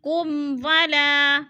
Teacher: میم ساکن کے بعد واو آ رہا ہے تو ادھر اظہار شفوی، لفظ کو ظاہر کر کے پڑھیں گے۔